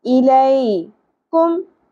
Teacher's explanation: لئی، یا ساکن سے پہلے زبر، اب یہاں پر یا ساکن حرف لین ہے، اس کو نرمی سے ادا کریں گے